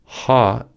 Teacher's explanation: in confusion ha is produced through friction in the vocal cords ha is unvoiced as the vocal cords do not vibrate during the production of this sound to create the ha sound the Deep back of the tongue